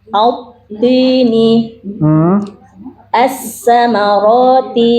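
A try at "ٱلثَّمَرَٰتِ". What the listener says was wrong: Nah, bukan sin, itu sa, Bu. Gigit, ujung lidahnya gigit. As-samarati.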